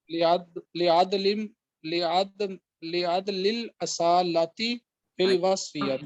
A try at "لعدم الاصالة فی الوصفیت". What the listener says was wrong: دیکھیں لعدم میم ہے نا، لعدم الاصالة فی الوصفیت.